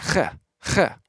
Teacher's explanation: Chet makes a rough H sound, kind of like the sound that you make when you clear your throat when you're sick.